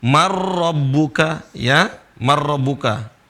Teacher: Di sini seharusnya idgham seperti marrabbuka. Kalau nun mati bertemu dengan ro, seharusnya nunnya melebur.